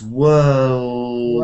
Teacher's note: hold on to the l, but don't slap it. You know, because a l is a la la la la la la la.